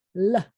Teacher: You take the tip of your tongue and put it behind your teeth and say L.